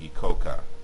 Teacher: without the nasalization of the final velar consonant